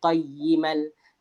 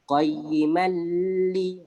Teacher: Jadi nun ni bunyi tanwin qayyiman tu, nun tu masuk ke dalam lam. Qayyimal. Kita terus bunyi qayyimal. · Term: idgham bila gunnah